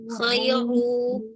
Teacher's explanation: Makanya kalau ro istahkim, ro itu diangkat pangkal lidahnya. Ru, dorong ke depan.